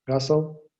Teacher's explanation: you get high tone on both syllables, and you know that the pattern for that word is high.